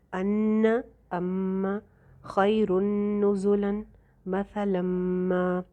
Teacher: غنہ کر کے پڑھیں گے کیونکہ شد ہے نون کے اوپر اور میم کے اوپر